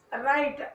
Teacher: when the letter W is followed by the letter R, the W sound is unheard.